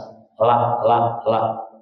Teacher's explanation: Lam itu adalah dari pinggir ujung lidah dan gusi atas.